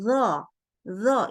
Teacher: baca do itu pangkal lidahnya di naikkan